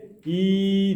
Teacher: Яғни біз білеміз, я әрпін біз махражын өткен кезінде білеміз, не істейміз? Мәтті яны оқыған кезде и деген кезде тілдің ортасы сәл көтеріледі, бірақ қатты көтермейді, сәл көтеріледі. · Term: мәтті ия